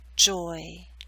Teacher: you're moving more towards E at the end, so you're pulling your lips outward, not into a full spread E, but close.